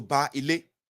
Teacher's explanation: Here the second B is dropped. Instead of babaile, is turned to baile. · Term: contraction